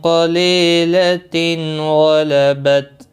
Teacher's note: لی یا مدہ ہے، ایک الف کے برابر کھینچ کر پڑھیں گے۔ تنوین کے بعد غین آیا ہے، اظہار حلقی ہوگا، گنہ نہیں کریں گے